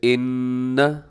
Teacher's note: یہاں نون مشدد ہے تو یہاں پہ اپنے غنہ کرنا ہے، آواز کو ناک میں لے کے جانی ہے